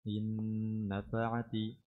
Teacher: Nun sakinah mudghamah fin nunil maftuha bi gunna harakatain